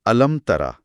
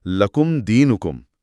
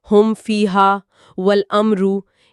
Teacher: यहां होठ मीम की अदायगी के लिए मजबूती से बंद होते हैं और अगले हर्फ के लिए फौरन खुल जाते हैं। कोई ताखीर नहीं, कोई गुनगुनाहट नहीं, कोई तवकुफ नहीं।